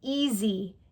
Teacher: But when Americans say that word, they would never say e. They say easy because that s sounds like a z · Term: z sound